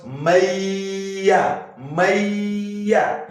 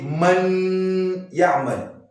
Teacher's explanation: those two harfs will be pronounced like an entity, like one harf with shadda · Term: Idghām